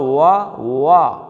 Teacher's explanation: ہونٹوں کو گول کریں گے تو واؤ کا مخرج نکلے گا